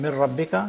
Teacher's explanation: noon completely it's lost it becomes ra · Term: complete assimilation